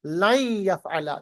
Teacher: نون ساکن کے بعد یا ادغام بغنہ